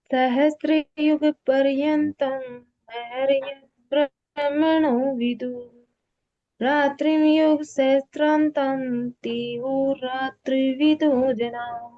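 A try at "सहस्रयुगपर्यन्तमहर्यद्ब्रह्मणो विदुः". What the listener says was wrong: आपने सहस्त्र युग पर्यंतम बोला, तो यहाँ मैं को अगले चरण में लेना है। सहस्त्र युग पर्यंत महर्यद ब्रह्मणो विदुः। इसमें ये श्लोक है, इसमें 8 अक्षर तक बोलना होता है, फिर उसके बाद दूसरा चरण शुरू हो जाता है। तो जो मिले हुए हैं उनको एक गिनना है।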